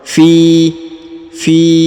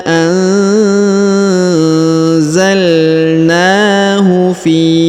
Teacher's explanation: huruf Fi dipanjangkan dua harakat karena di depan huruf Fi terdapat ya sukun atau ya mati